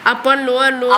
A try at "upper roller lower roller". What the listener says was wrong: Upper roll, lower. You are saying upper lower. Upper roller.